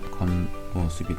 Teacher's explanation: 디귿으로 바뀌고요. 자, 비음이 아닌 자음과 비음인 자음이 만나서 비음화가 이루어지겠죠. 최종 발음은 겉모습이 되겠네요.